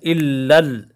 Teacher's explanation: پہلے لام پر بھی مشدد ہے، دوسرا لام بھی مشدد ہے، اس دونوں پر ٹھہرا ہوگا